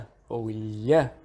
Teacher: E lateral aproximante, sons que fazem o ar passar pelos lados da língua, como um L ou lha.